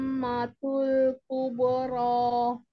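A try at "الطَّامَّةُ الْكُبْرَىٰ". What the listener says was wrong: Perhatikan mim sukunnya masih kurang ya.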